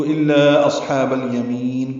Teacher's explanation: مد اصلی کے بعد حمزہ آنے کی وجہ سے مد منفصل ہے، چار حرکات لمبا کریں گے